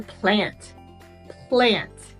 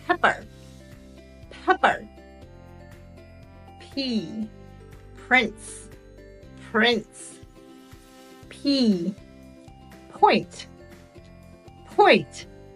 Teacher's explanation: together and air comes through the lips to make the sound there is no vibration in your throat therefore it is an unvoiced sound